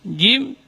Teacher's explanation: Kemudian huruf jim, ar-rajim, jim, ini termasuk huruf syiddah. Dia keluar dari tengah-tengah lidah. Jim, tidak boleh ada angin yang keluar juga